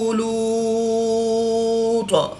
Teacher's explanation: فآمن له لوط، واو مدہ کے بعد طا کی 2 پیش کو وقف کی حالت میں ساکن کر دیں گے، تو یہاں پر مد عارض ہوگی، 2 سے 3 الف تک کھینچ کر پڑھیں گے۔